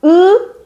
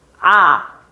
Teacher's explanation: 으가 혀가 높이 있는 거야. 그리고 아는 혀가 낮게 있는 거야. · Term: 고모음